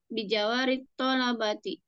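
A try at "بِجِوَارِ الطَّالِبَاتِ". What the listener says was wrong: Biji. Bijiwa. Bukan bijawa. Biji.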